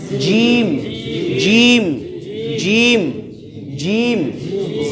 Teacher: জিহ্বার মাঝখান থেকে উপরে তালুতে লাগাইয়া শক্তভাবে